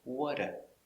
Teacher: Not do, because do is not stressed. We pronounce it duh.